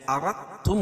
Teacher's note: یہ دال تا میں مل جائے گی، اس کو اردتم کہیں گے. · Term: ادغام متقاربین